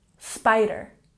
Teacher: let's make sure that we emphasize the first syllable in spider